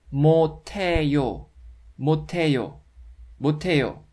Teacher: This d consonant combines with h consonant in the letter block and it turns into t sound.